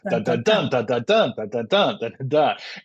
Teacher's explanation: So it's like dun dun dun dun dun dun dun dun dun, right? Whereas the anapest is two unstressed syllables followed by a stressed syllable.